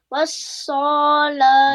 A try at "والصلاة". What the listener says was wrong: No, Sod will not be stretched. No reason to do that.